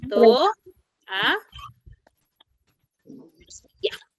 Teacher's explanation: Nos vamos a dar cuenta que cada vocal está en sílabas diferentes. Ya no están juntas estas vocales. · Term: hiato simple